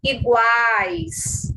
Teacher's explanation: O U é semivogal, o A é vogal, o I é semivogal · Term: tritongo